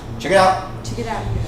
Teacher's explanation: T sound vanishes when you say it fast.